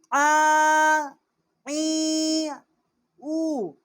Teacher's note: عین ہے، وسط حلق سے اس کا مخرج ہے۔ عین کھڑا زبر آ، عین کھڑی زیر عی، عین الٹا پیش عو، آ عی او۔